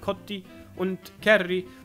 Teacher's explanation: Es verschwindet und wir haben kotti und kärri. Dann ist es auch irgendwie oft so, dass die Finnen ein i dranhängen.